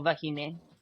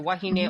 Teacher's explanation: depending on where on the islands you refer to, it's either a V or a W